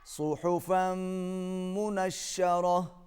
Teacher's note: ہا کو حلق سے ادا کریں گے، تنوین کو میم کے ساتھ ملائیں گے، آواز ناک میں جائے گی۔